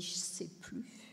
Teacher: Quand on dit « je sais plus », le L, il est souvent désonorisé. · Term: un L qui est désonorisé